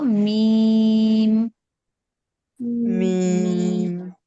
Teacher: মিমটা দুই ঠোঁট থেকে উচ্চারণ করব